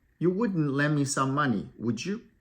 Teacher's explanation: we use a rising tone for example asking for a favor